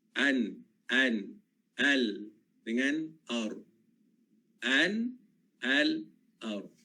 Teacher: 3 makhraj dia. Yang di depan gusi ni adalah huruf nun. Di tengah huruf lam. Dan di bahagian belakang adalah huruf ra. Tapi dia dekat-dekat lah.